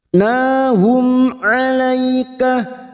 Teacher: Mim sukun dibaca jelas, namanya bacaan idhar safawi. Kita baca jelas tanpa mendengung.